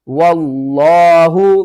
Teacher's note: واو کو ہم نے لفظ اللہ کے دوسرے لام کے ساتھ ملانا ہے، یہ الف اور یہ لام دونوں کو چھوڑ دیں گے